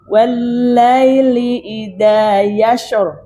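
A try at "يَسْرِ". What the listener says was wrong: Sana shin. Sin. Yasir.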